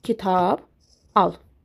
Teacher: Əgər bunlardan sonra sait gəlirsə, samitlər dəyişmir. Yəni, sondakı cingiltili samitlər elə cingiltili olaraq qalır.